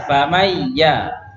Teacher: Baik, maka dengungnya itu milik nun. Dengungnya harus keluar dari hidung, tidak boleh keluar dari mulut ya. Kalau keluar dari mulut berarti hilang sifat nunnya.